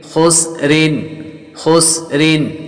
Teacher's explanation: را کے نیچے 2 زیر تو را کو باریک پڑھتے ہیں